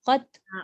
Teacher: Dia bukan lantunan, dia bukan qalqalah.